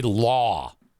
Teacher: look we need to break this down this is English l-a-w that W is not an R sound how is it that you've been trained to say lar enforcement